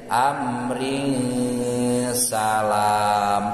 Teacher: Jadi keur nyebat amrin salam teh ring posisi letah teh tos siap-siap ngucapkeun sin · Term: ikhfa